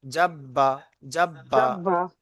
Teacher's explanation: তাহলে বায়ের উপরে তাসদিদ এসছে, বাটা তার আগের অক্ষরের সাথে মিলিয়ে পড়তে হবে, অর্থাৎ জিমের সাথে মিলিয়ে পড়তে হবে